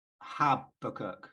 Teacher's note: I grew up with Habakkuk, like the emphasis on the first syllable